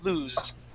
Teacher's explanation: that is with that Z sound, lose. That's the voiced S.